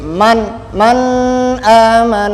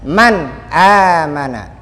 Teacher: kasih garisbawahi ini contoh hukum nun mati ya contoh hukum normatif nun mati bertemu dengan hamzah Jadi bacanya jelas tidak boleh dibaca guna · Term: izhar